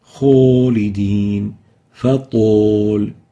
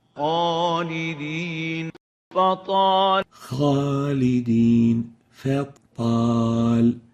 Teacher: So please make sure to pronounce the alif from the right articulation zone and avoid pursing the lips upon pronouncing the alif so it wouldn't look like an O